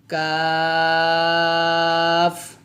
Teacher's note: কাফ উচ্চারণ করার সময় জিহ্বার গোড়া একটু আগে বাড়াইয়া লাগাতে হবে এবং একটু শক্ত করে উচ্চারণ করতে হবে